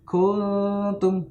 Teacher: Tidak dibaca gunnah utuh, tapi dia dibaca samar-samar antara izhar dan gunnah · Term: ikhfa